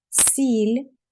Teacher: Сіль, с м'ягко звучить і лі звучить м'ягко.